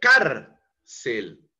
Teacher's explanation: La entonación está en la penúltima sílaba.